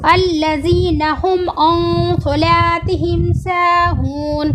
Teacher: अल्लज़ीना में ज़ाल का मखरज ज़बान की नोक सामने के दो दांतों के किनारे से लगाकर अदा किया जा रहा है। हुम अन सलातिहिम में नून को नाक में छिपाया गया है क्योंकि स्वाद हुरूफ़ इक़फ़ा है, हुरूफ़ इक़फ़ा 15 है।